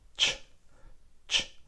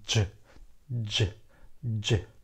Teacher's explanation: It's a little bit where the alveoli, or a little bit even higher, and we'll touch it, and then we give a ch, ch. If we give a little bit of a voice, then we'll have j